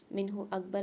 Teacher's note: منہ اکبر میں نون ساکن کے بعد ہا آ رہی ہے، یہاں بھی اظہار کر کے پڑھیں گے، غنہ نہیں کریں گے